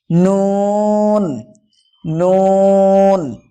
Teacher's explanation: জিহ্বার আগা তার বরাবর উপরের তালুর সাথে লাগিয়ে উচ্চারিত হয় নুন